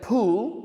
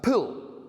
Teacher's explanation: if we take the oo sound and make it shorter, oo, we see that pool, swimming pool, becomes pull